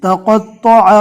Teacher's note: تا کو نارمل پڑھنا ہے، قوف اور تو کو پور پڑھنا ہے